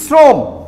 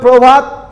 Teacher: আদ্য অ যদি র ফলা যুক্ত থাকে, তাহলে সেই অয়ের উচ্চারণ সংবৃত হবে।